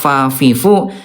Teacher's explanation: Huruf fa kan dia tempat hurufnya bibir dalam bagian bawah disentuhkan dengan ujung gigi seri atas